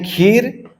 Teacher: वह दीर्घ ई है और र का जो स्वर अ होता है हम लोग जानते हैं कि एक अक्षरी में उसका लोप हो जाता है